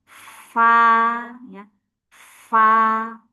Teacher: Kemudian asyafah bibir batnus syafah bibir bawah kena ujung gigi seri atas fa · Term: Batnu syafah